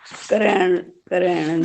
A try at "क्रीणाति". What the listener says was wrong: नहीं क्र में बड़ी ई की मात्रा है, इसलिए क्री, क्री